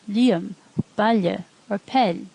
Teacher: Slender L sounds like ly, as in the Irish words liam, balje, or pel